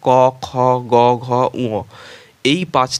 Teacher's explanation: এগুলো উচ্চারণের সময় জিহোবার নরম তালু স্পর্শ করে উচ্চারিত হয় বলে এগুলোকে জিহবায়ী বা কণ্ঠস্পর্শ ধ্বনি বলা হয় নম্বর দুই দেখব